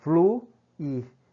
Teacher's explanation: Fluir, o I, o U se afasta do I, hiato.